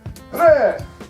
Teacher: In Cherankan, R's and L's both make the sound of a rolling R.